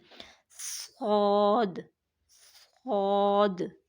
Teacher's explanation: جب ہم صاد کو ادا کرتے ہیں تو سب سے پہلے ہماری سیٹی نکل رہی ہے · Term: حروف صفیریہ